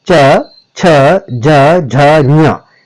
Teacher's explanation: फिर तालव्य व्यंजन आएंगे जिसमें पूरा च वर्ग आता है